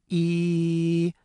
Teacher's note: the part of the tongue that's raised up high is the front part of the tongue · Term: front vowel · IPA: [i]